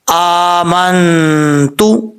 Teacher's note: ساکن کے بعد تا آ رہا ہے حروف اخفاء میں سے، نون ساکن کے بعد اگر حروف اخفاء میں سے کوئی حرف آ جائے تو کیا ہوتا ہے؟ غنہ ہوتا ہے، ایک الف کی مقدار